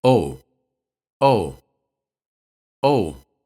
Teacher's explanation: In this case, it can express surprise when pronounced with a quick falling intonation.